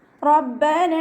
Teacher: റ ഫത്ഹ വന്നതുകൊണ്ട് നമ്മൾ ഉയർത്തിയിട്ട് ഉച്ചരിക്കുട്ട റ എന്നുള്ള സൗണ്ട് തന്നെ കൊടുക്കുക റ എന്നായി പോകരുത് റബ്ബന ബാക്കി ശബ്ദം